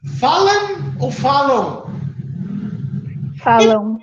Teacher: aqui eu tenho um ditongo decrescente, porque o U é mais fraco que o A é sempre mais forte que todos. · E ele é nasalizado porque tem o tio. Então, eu tenho um ditongo e ele é nasalizado. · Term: ditongo nasal